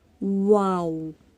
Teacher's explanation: ہونٹوں کو گول کرنے سے ادا ہوتا ہے، منہ کے خالی حصے سے اور ہونٹوں کو گول کرنے سے